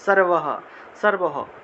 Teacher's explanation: একদম শেষে যদি বিসর্গ থাকে তাহলে পূর্ণ হ উচ্চারণ হবে